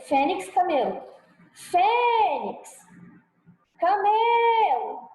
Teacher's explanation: Paroxítona, a sílaba tônica é a penúltima da palavra.